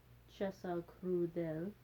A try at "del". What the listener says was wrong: Watch your del, that you don't anticipate the L too much. Just think del. As opposed to del.